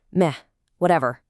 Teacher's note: If someone asks if you want pizza or burgers for dinner, and you give a flat, brief tone, meh, whatever, it just means you don't care, you're completely indifferent and happy to let them decide.